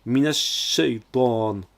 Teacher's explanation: C'est un shin, un sh accentué. C'est une double consonne, donc c'est une shadda. Alors on insiste dessus. On prononce alors minash shaytan.